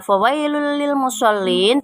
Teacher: Pada kata fawailul lil musallin terdapat idgham bila gunnah karena ada dhammah tanwin bertemu dengan huruf lam. Cara bacanya, tanwin dimasukkan ke huruf lam dan dibaca tidak berdengung